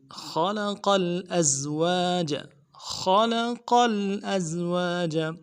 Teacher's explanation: سبحان الذی خلق الازواج، خلق الازواج، خلق میں خا کو موٹا کرنا ہے، لام کو نرمی سے پڑھنا، قوف کو موٹا کرنا، آگے لام کے ساتھ ملانا ہے۔